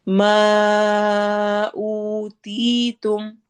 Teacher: او واو مدہ، تی یا مدہ، تو دونوں کو ہم نے ایک جتنا لمبا کرنا ہے